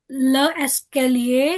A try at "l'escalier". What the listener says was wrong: No, आप le escalier ऐसे नहीं बोलोगे.